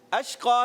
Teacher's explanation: شین کو جو ہے منہ میں آواز پھیل جائے